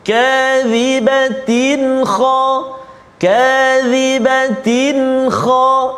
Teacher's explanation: Nama dia tanwin bertemu dengan kha, izhar halqi, tanpa dengung.